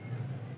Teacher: Di ayat ketiga ini kita mendapatkan pertama hukum mad tobi'i berupa bakhiun. Hukum mad tobi'i yang panjangnya 2 harakat.